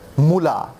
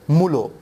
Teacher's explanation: প্রথম ধ্বনি হচ্ছে মু পরের ধ্বনি লা এপাশেও কিন্তু প্রথম ধ্বনি মু কিন্তু পরের ধ্বনি হয়ে গেছে লো